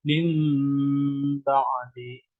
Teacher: Kedua bibir agar dirapatkan untuk mengeluarkan bunyi mim seraya dibarengi sengau yang keluar dari pangkal hidung sambil ditahan sejenak. Dengan kata lain begini, jadi ikrab itu apabila nun mati atau tanwin bertemu dengan huruf ba maka berubah bunyinya, jadi bukan min tapi mim gitu ya. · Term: iklab